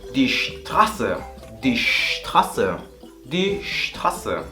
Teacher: la S a principio de palabra también va a tener una fonética un poquito más fuerte, como si mandaras a callar a alguien